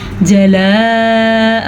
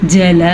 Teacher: اس کھڑے زبر کو لمبا نہیں کرنا جو حمزہ کے اوپر ہے